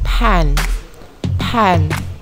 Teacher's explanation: produced by stopping the airstream briefly then letting it go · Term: stops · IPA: [p]